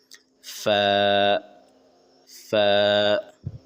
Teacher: اوپر کے دانت کو نیچے والے ہونٹ پہ رکھ کر فا ادا کرے، یعنی کہ اوپر کا جو دانت ہے نیچے والے ہونٹ پہ آپ رکھ کے بول دے، ہو جائے گا فا فا.